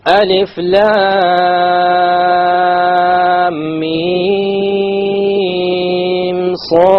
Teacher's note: Where was the ghunna? Between the lam and the mim, and that is it. I didn't do a ghunna between the mim and the sad.